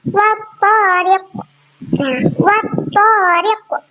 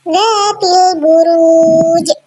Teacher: cara membaca qalqalah kubro harus lebih jelas dan lebih berkumandang dibandingkan dengan qalqalah subro. Jadi pantulan pada qalqalah kubro lebih jelas dan lebih berkumandang dibandingkan dengan qalqalah subro.